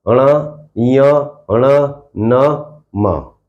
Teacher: इन सभी का उच्चारण नाक से होता है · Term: नासिक